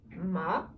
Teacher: we have the second tone as seen in nin. It's the rising tone